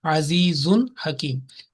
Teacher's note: This is from letters of throat, yani al-huruf al-halaqiyya. So ha, and this za or tanween over za will be clearly pronounced, only 1 second. There will be no nasal sound